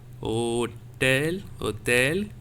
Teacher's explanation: O, that O will. We have to just expand the O a bit, 1 or 2 sec to pronounce this word. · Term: accent circumflex